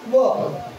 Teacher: व हा एकमेव व्यंजन आहे ज्याचा उच्चार दंतोष्ठ दात आणि ओठांचा वापर करून उच्चारला जातो. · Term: दंतोष्ठ वर्ण